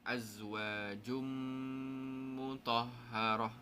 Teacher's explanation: Tanwin bertemu mim. So bacaan dia pastikan dengung.